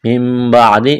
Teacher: اقلاب کریں گے, نون کو میم سے تبدیل کرنا ہے.